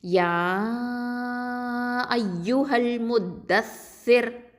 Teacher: Okay, இதில் பார்த்திங்கன்னா ராவை நம்ம தர்க்கிக்காக தான் ஓதணும், ஏன்னா ரா சுக்கூன் பெற்று அதற்கு முன்னாடி உள்ள எழுத்து கெசரா பெற்று வந்திருக்குது. ஓகேவா? அதனால் இதை மெல்லினமாக தர்க்கைக்காக ஓதணும்.